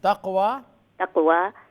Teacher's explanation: qaf is full mouth for the sifat istiala. Waw is fatha muqaddara, mad asli sabi natural mad.